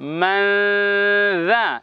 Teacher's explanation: রালকে বলবো জিহ্বার আগা, জিহ্বার আগা এবং সামনের 2 দাঁতের আগার সঙ্গে নরম করে লাগিয়ে বলবো রা